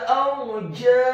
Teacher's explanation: Ala arjaiha, kata arjaiha, huruf alifnya dibaca tipis fathah satu harokat, huruf ra-nya dibaca sukun isti'la wa tafkhim, bergetar dan tebal